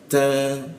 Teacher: ta ada hembusan bocor halus